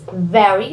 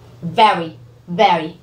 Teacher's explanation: In this word very, you need to touch your lower lip with your upper teeth.